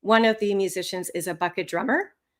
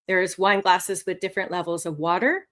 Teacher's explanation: The other slight problem that this man also demonstrated using intonation incorrectly is that his voice went up quite often when it should have fallen instead.